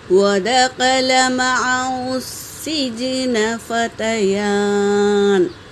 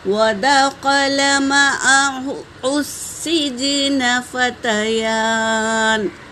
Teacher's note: سین پر تشدید ہے، یہ حرف شمسی کا قاعدہ ہے، اس لیے الف اور لام کو نہ پڑھیں، ہا کو ڈائریکٹ سین میں ملائیں گے